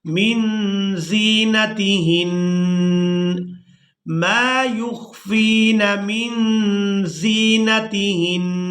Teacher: اب یہاں پر بھی آپ لوگ علامات وقف دیکھ رہے ہیں، وقف کریں گے تو وقف کی صورت میں نون مشدد پر غنہ کیا جائے گا